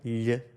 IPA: ʎ